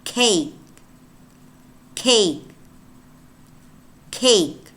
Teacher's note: At the beginning, one which is aspirated because it's stronger, it's more plosive, and then one at the end which is not plosive.